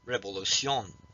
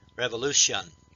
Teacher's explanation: we accent the next to the last syllable, and we sort of say shun, as if S-H-U-N.